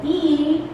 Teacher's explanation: pronounce the sound long e it means that at the very front of the tongue and also the raising of the mouth is quite high